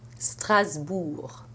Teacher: Also in the place name Strasbourg, where the voiced B makes the S sound like a Z